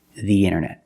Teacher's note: Remember, when you say the word internet, use the. Pronounce the with a long E, the internet.